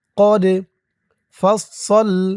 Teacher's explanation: দাল কলকলার হরফ ধাক্কা দিতে হবে